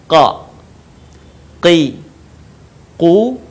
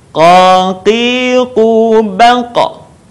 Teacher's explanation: Huruf ini keluar dengan menyentuhkan pangkal lisan kita dengan langit-langit bagian belakang. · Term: huruf qa